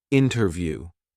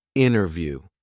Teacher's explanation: In America, it's interview. Here, the T completely disappears. Interview. I'd actually say it's substituted by another N, making the N sound a little longer. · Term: Elision